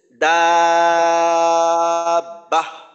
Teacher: গোলতায় অক্ফ করলে আপনার গোল হা পড়তে হয়। গোলতায় অক্ফ করলে ওই তায়ের যে নক্তা ওইটা আর থাকে না, ওইটা গোল হা হয়ে যায়।